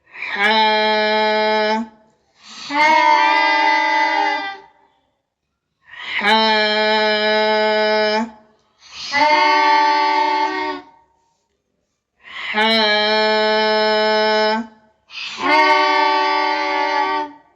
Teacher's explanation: হাটা গলা চেপে আমরা উচ্চারণ করব হলকের মধ্যখান থেকে।